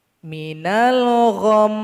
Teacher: Cara berwaqaf pada huruf mim tasydid adalah kita dengungkan selama 2 harokat. Minal gham, kita sukunkan hurufnya langsung didengungkan.